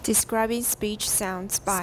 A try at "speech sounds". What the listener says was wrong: Speech, 要高一点, speech sounds. Mm-hmm. Can you go a little higher? Speech sounds.